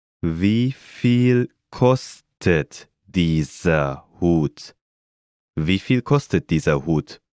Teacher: Note again the rising intonation.